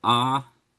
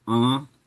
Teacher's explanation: This in is both a consonant and a nasality indicator. So A is oral ah, and A in is nasal ah.